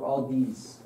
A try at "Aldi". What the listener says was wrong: I think it's Aldi. There's no S in like the name.